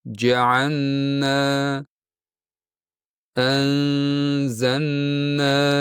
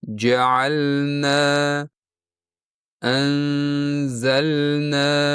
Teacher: Biroq toʻg'ri talaffuzda siz lamni bir harakat miqdorida ushlab, aniq bildirib o'qishingiz · Uchinchi keng tarqalgan xato lamni nunga qo'shib yuborish.